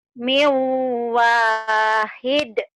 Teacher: Dalnya huruf qalqalah kan, kalau dihentikan jadi qalqalah kubro.